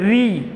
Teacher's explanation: ये जो री है इसका उच्चारण श्वास में जोर दे करके होता है। ये 2 मात्राओं का समय खाता है, इसीलिए क्या है दीर्घ री है।